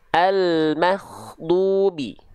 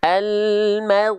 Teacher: karena huruf ginnya bocor pakai nafas jangan pakai nafas tapi almagdubi dirasakan dari ujung tenggorokan ya dari tenggorokan paling luar atau paling atas tapi jangan dialirkan nafas kalau dia dialirkan nafas jadinya ada khya dia nanti jadi ko